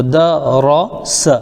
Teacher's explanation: اب اس میں ہمیں دونوں چیزیں دیکھنی ہیں، را کو پر پڑھنا ہے اور سین کو سیٹی کے ساتھ پڑھنا ہے